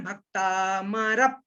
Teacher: इस पा को रा के साथ मिलाना है, भक्तामरप, रप बोलना है।